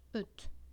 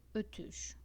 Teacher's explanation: U is front, but it's also rounded, right?